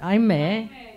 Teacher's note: that e is open at the end